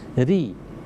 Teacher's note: Kalau ketika dia berharokat kasrah atau di bawah dia sangat tipis